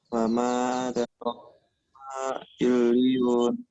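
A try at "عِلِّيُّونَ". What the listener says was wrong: Cuma makhraj ainnya masih illiyun, harusnya illiyun.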